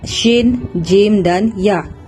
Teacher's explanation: ketiga-tiga huruf ini berada di tengah lidah ditekan ke langit atas